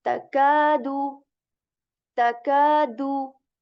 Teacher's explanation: We will stretch the sound of ka here to two counts. Why? Because after kaf, here this kaf letter, there is this alif. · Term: mud